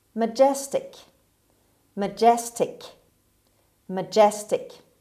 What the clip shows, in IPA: məˈdʒestɪk